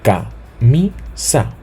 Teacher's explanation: la intensidad de la voz recibe o se percibe más en la penúltima sílaba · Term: palabras Llanas